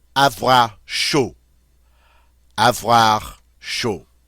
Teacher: Notice the D is not pronounced. The A used that nice O sound.